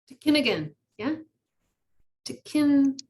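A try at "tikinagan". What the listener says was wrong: Close. You got the wrong emphasis on the wrong syllable.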